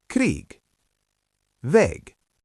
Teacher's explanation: When G is at the end of a word, it sounds like K. Again, the final sound changes from G to K.